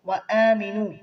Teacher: حمزہ پر کھڑی زبر ہے، ایک الف کے برابر کھینچیں گے